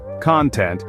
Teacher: first syllable content it's a noun meaning satisfaction or happiness but if you stress the second syllable content it becomes an adjective meaning willing or satisfied